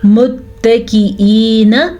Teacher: حمزہ کو لائٹ طریقے سے پڑھنا ہے کیونکہ یہ حمزہ ہے نہ کہ عین ہے